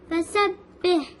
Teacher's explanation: ہا از come from the middle throat